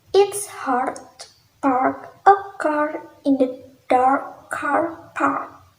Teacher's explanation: To pronounce the A sounds, lower your jaw and tongue, opening your mouth wide and keeping your lips relaxed. It is a long voice sound, so you should vibrate your vocal cords while making the sounds.